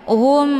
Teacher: mim sukun bertemu dengan ba ini dinamakan dengan Ikhfa Syafawi cara bacanya mimnya ditekan kemudian ditahan lebih kurang dua kali ketukan